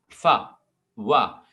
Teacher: मेरे नीचे वाला होंठ जो है वो ऊपर के टीथ से मिल रहा है, फिर ये साउंड प्रोड्यूस हो रहा है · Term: लैबियोडेंटल्स